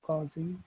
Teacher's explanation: Now causing that has two syllables. Which syllable should we emphasize? Causing is the first.